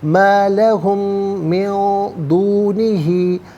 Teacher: لہم میں میم ساکن ہے، اس کے بعد میم آ رہا ہے تو میم کو میم کے ساتھ ملا کر غننے کے ساتھ ادا کیا جائے گا۔ من میں نون ساکن ہے، اس کے بعد دال حرف اخفا ہے تو نون ساکن کو اخفا کے ساتھ پڑھیں گے۔